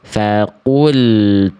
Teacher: Faqul harusnya faqulu. Tidak ada le di ujung pelafalan lam sukunnya.